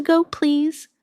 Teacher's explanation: When you say to go, your voice should rise slightly. It makes the question sound polite and clear.